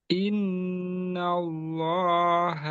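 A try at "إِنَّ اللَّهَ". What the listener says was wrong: nggak dinaikin suara pada i dan inna.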